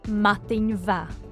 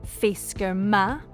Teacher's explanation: This lenition happens often, but in very definite circumstances. In Mathin va, the softening of ma to va tells us that the noun mathin is feminine, but fisker is masculine, so the sound of ma is unchanged.